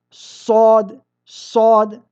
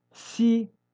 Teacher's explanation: نفرق بينهما بصفة الاستعلاء وصفة الاستفال. فعند النطق بالصاد يرتفع لسانك صاد صاد، وعند النطق بالسين يستفل لسانك سي. وهذه من الفروق التي بين السين والصاد.